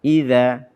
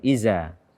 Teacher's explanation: tidak melafazkan zal dengan benar, tidak membacanya sesuai dengan makhrajnya atau menggantinya dengan zai. Idza bukan iza.